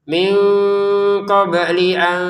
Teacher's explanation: Min bertemu qof baca dengan samar